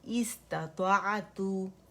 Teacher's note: ता में हमने बारीकी से दम्मा के साथ गोलाई दी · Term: तवस्सुत